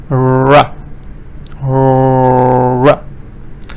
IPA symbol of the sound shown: r